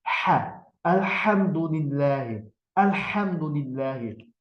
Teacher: bu səs bu hə hərfi boğazın ortasından çıxmalıdır